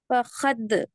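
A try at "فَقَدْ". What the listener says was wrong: काफ का मखरज सही अदा करके बोलिए, खलखला अच्छा करे माशाल्लाह। फकद, फकद। काफ का मखरज अदा नहीं हो रहा बराबर। फकद, फकद। फा मुतहरिक, कद।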